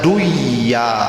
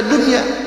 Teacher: Ketika nun mati ketemu dengan iya dalam 1 kata, tidak boleh diidghamkan. Balikta harus dihukumkan izhar mutlak.